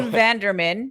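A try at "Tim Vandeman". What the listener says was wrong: Vanderman. There's no R in there. Tim Vanderman. You did.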